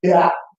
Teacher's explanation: it has vowel diphthongization and breathiness. So very salient contrast.